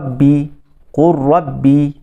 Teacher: Idam yang tidak ada ghunah yang tidak ada dengung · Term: Idam Kamil